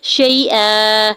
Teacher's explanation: ہا کی پیش کو بغیر کھینچے ہوئے ادا کریں گے، شیئا، یا ساکن پر شین کے اوپر زبر یا لین ہو رہا ہے نرمی سے موڑتے ہوئے ادا کریں گے